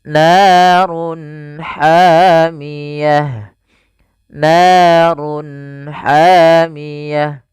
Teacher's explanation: suaranya harus dibaca dengan jelas izhar jelas halq karena dia bertemu dengan huruf-huruf halq setelahnya yaitu huruf ha maka harus dibaca dengan jelas narun hamiyah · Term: izhar halqi